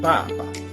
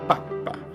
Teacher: That colon tells you to make the preceding sound longer. So in Papa, Pope, the A is long, Papa. And in Papa, baby food, the P is long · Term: consonant doubling